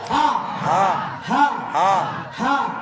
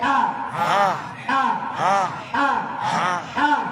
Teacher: প্রথম হায়ে বাতাস লাগছে, দ্বিতীয় হায়ে বাতাস লাগে নাই। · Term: গোল হা